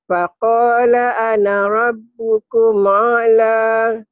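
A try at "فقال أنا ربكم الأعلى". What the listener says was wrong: Ketinggalan mulnya. Rabbukumul a'la.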